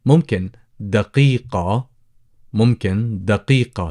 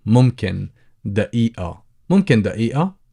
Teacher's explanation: So that's the قاف, دقيقة. Or you could go with the glottal stop.